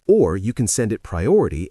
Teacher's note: notice the stress on the word or. The sources tell us that or signals a choice and emphasizes that there is another possibility.